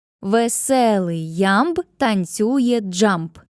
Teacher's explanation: У цій фразі рівномірно чергуються ненаголошені й наголошені склади. Ненаголошений, наголошений, ненаголошений, наголошений і так далі.